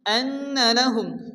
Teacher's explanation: নুনের উপরে তাসদীদ, নুন গুন্না ওয়াজিব